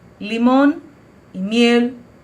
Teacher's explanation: la consonante l diferentemente de lo que ocurre en portugués nunca se convierte en una u